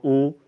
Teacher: उ का उच्चारण होठों से होता है